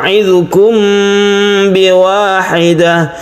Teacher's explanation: ketika membaca mim, kita bersiap untuk membaca ba, dan ini dilantunkan atau dipanjangkan. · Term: ikhfa syafawi